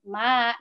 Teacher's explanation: Kita cukup mengayun bacaan itu dengan 2 ketukan gitu, tidak terlalu panjang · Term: mad tabi'i